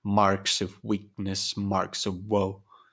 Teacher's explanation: there is a stress on the first syllable here on the word mark